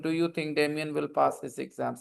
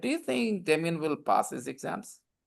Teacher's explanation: did you notice this time my voice went up, down, up, down many in different places? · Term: intonation